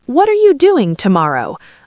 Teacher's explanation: >> Ideally, in a polite London context, I would use a falling-rising intonation to sound inviting. · My voice goes up on doing and settles down, then a little tick up at the end. It's soft. It sounds lovely, very polite.